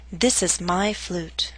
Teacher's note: chose to stress my